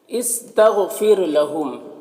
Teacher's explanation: غین حروف مستعلیہ میں سے ہے، اس کو پر پڑھیں گے۔